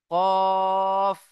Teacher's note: জিভের শেষ ভাগটা উপরের তালুর সাথে লাগিয়ে উচ্চারণ হয় কফ